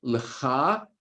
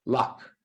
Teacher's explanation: The end of the pronunciation, that end vowel sound drops. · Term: a northern variant